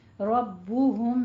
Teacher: میم ساکن کے بعد با آ جائے تو وہاں پہ ہمارا اخفاء شفوی ہوتا ہے، میم کی آواز کو با میں چھپانا ہے، لیکن نون ساکن کے بعد جب با آ جائے تو وہاں پہ اقلاب کرنا ہے، یعنی نون کی آواز کو میم میں بدل دیں گے۔